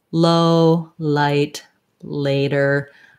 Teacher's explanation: I can feel my tongue touches up behind the teeth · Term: L sound